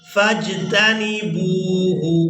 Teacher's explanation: با واو پیش بو کھینچ کر ادا کریں گے